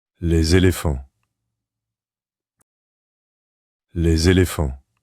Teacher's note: Notice the smooth linking sound between the two words, where the normally silent S is pronounced like a Z to connect with the following vowel.